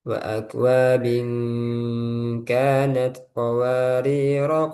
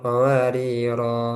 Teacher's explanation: Mau wakof mau wasal dia dibaca pendek. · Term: sifar mustadir